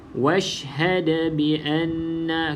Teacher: da qalqalah, maka adakan lantunan. Okey, dekat sini lantunan kubra lah sebab dia hujung kalimah.